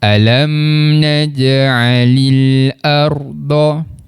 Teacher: huruf ra tadi tu perlu dibaca dengan bacaan tebal